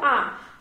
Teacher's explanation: আ যখন আমরা উচ্চারণ করি তখন জিহ্বাটা একদম সেন্টার বা কেন্দ্রে অবস্থান করছে, এই জন্য আকে কেন্দ্রীয় স্বরধ্বনি বলা হয়।